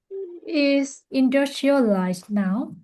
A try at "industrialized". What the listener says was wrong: It's industrialized now. No, the stress is on the word dust. Industrialized. Industrialized.